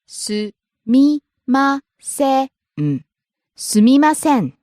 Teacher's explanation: Starts low, rises on me, drops at the end. Next. Taxi.